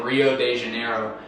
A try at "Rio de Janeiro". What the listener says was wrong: Rio, yeah. Yeah, we don't have long O's or long A's.